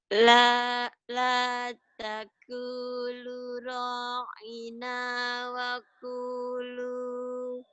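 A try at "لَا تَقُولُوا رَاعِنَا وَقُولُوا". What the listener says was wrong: La taqulu. Lu tadi di sini kurang. La taqulu ra'ina wa qulu.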